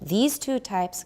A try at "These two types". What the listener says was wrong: You need more E and you need more Z, both.